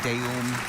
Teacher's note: that Latin ending deum, and transliterated into English as a long E rather than a schwa